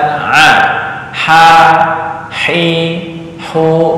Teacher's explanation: tenggorokan bagian tengah keluarnya adalah ha dan a